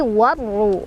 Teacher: Cara bacanya diidghamkan atau langsung dimasukkan ke huruf syamsiyahnya ya. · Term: idgham syamsiyah